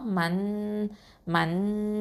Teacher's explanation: எஹ்ஃபா பண்ணணும், அதாவது மறைச்சு ஒன்றா செஞ்சு ஓதணும். அப்போ என்ன சொல்லுவோம், மண் மண் அப்படின்னு அந்த நூனை வந்து ஹைட் பண்ணுவோம்.